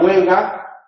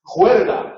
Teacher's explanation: con la confusión de la lateral y la vibrante por posición implosiva y la sustitución de la H por la J